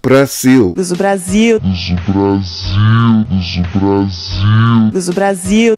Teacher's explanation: consonant L is pronounced like o in most Brazilian dialects · In Brazil, at the end of words, the consonant L is pronounced like U.